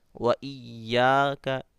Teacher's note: Double پڑھنا ہے، تشدید ہے تو ایاک نعبد و ایاک نستعین، وَإِيَّاكَ، یا کو کھینچنا ہے، کاف کو نہیں کھینچنا کیونکہ کاف حرکات ہے اور یا میں الف مد ہے، تو یا کو کھینچنا ہے ایک الف.